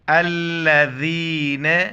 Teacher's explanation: الذین، ذال کی زبان باہر نکالنا ہے.